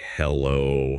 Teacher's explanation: The rising pitch acoustically signals I am here. · In a personal context, answering with hello utilizing a slightly rising intonation is standard